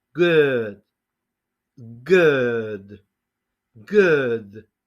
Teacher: la G es muy sonora, es explosiva en inglés